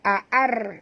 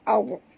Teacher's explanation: ra mati, huruf sebelumnya baris atas, maka kena baca tebal. Jangan baca ar, bukan ar, tapi bunyi dia au, tebal ya.